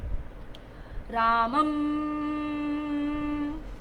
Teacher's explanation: मेरा मुख बंद हुआ और नाक से सारी वायु बाहर गई है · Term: अनुस्वार